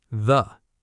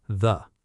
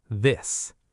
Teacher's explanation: Tongue between teeth, voice on. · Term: voiced version